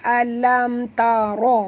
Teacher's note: Ra sini ra tafkhim, bila di baris atas kena tebal